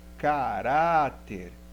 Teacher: então a sílaba mais forte é penúltima então caráter é uma paroxítona